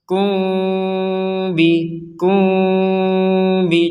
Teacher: dibaca dengan samar kalau mim sukun bertemu dengan ba